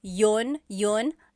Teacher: usually the letter I sound is dropped